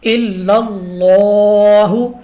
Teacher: لام آف اللہ سے پہلے حرف پر زبر آ گئی ہے تو لام آف اللہ کو پر پڑھیں گے